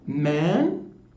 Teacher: so the vowel here it is in a medial position and it becomes nasalized because it appears after a nasal sound the first sound and before the second sound which is itself nasal